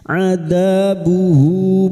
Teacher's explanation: Atakum adzabuhu huruf 'ain dza fathah bertemu alif, dua harakat kita panjangkan, mad thabi'i, uhu ha dhamir dengan vokal panjang dan tidak bertemu hamzah, mad silah qasirah, dua harakat kita panjangkan